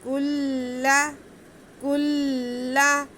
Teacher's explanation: کاف باریک کاف ہے، کاف کو ہم لام کے ساتھ ملائیں گے